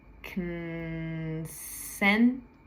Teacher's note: It looks like con, but we just say kn, like it's K-N.